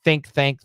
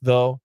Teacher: there's one th with air and one th with uh vibration